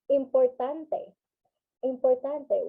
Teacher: it has a constant rising and falling uh pattern